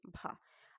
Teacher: हिंदी की स्पर्श घोष महाप्राण ओष्ठ व्यंजन ध्वनि है